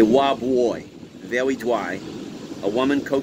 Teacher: The husband pronounced his R's as W's, a speech defect, sometimes actually a dialect, called R labialization.